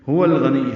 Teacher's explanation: ہا اقصا حلق سے ادا کریں گے